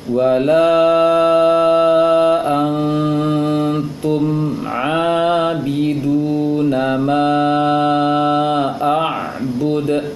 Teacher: Setelah ma ada alif, setelah alif ada hamzah, maka ma 4 harokat bacaannya.